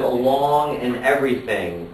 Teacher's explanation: And the same thing here with along and everything. Well, they both end with the NG sound, but we don't really count that as rhyme because the vowel sound that comes right in front of it is different.